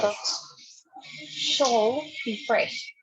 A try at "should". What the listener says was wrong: Should. Don't say shall. Should. Our products should be fresh. Okay, practice the pronunciation of should.